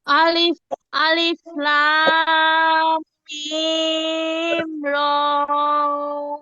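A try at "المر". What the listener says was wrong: লামে টান কম হয়ে গেছে, তারপরে গুন্না হবে। আর র এর মধ্যে মাত্র এক আলিফ টান, টান বেশি হয়ে গেছে। আমারটা শুনেন, আবার বলেন। আলিফ লাম মিম র।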